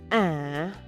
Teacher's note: Bắt đầu ở những nốt trầm trung bình và sâu lắng, sau đó thường nhẹ nhàng tăng lên ở cuối, tạo nên chất nhạc mượt mà, như một lời chất vấn. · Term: âm điệu